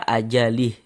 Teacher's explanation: Huruf H kan tidak dibaca panjang, makanya hurufnya itu kita sukunkan, kita matikan, sehingganya kita baca ajalih.